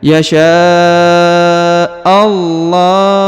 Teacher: lafaz Allah pada huruf lam ini dipanjangkan boleh dua boleh empat boleh enam